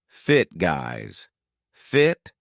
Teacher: Did you notice how I used a glottal stop at the end?